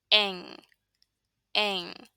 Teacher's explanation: Put the back of your tongue up against the soft part of the roof of your mouth. Your tongue is not touching your teeth, it's further back, and the air comes out of your nose.